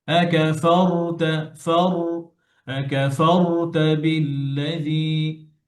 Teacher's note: র যখন সুকুন হয় তখন র এর আওয়াজ বন্ধ হবে না, র এর আওয়াজ চলবে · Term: তাওয়াসুতের হরফ